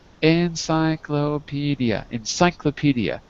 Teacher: the second syllable is the strong syllable we call that the stress